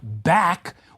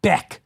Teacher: the A sound, in a word like back, which is raised and fronted to a short E, like beck